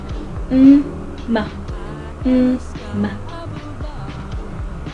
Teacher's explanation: Next is the M, letter M, which is a bilabial nasal